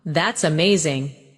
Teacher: When you say that's amazing, your tone rises with excitement. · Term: rising tone